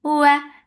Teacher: makhraj of waw is circling your lips, the sound is short.